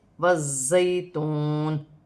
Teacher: یا ساکن سے پہلے زبر ہے تو یا لین بنے گی، اسے کھینچا نہیں جائے گا۔ زا مشدد ہے، سیٹی والا حرف ہے، جماؤ کے ساتھ ادا کیا جائے گا،